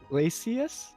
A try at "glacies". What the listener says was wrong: It's not Glacius. There's no U. It's GLACIES.